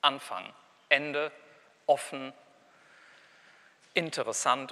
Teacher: Das fängt gar nicht mit einem Vokal an, sondern da steht, da kommt erstmal dieser glottale Plosiv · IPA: ʔ